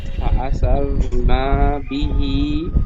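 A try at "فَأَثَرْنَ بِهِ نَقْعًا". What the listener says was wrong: না বলে নুন টান হবে না। فأثارنا به نقعا।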